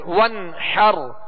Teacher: تو پیارے میٹھے اسلامی بھائیو، یہاں غنہ نہیں کریں گے، ظاہر پڑھیں. وَانْحَرْ، حا کو وسط حلق سے ادا کریں گے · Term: اظہار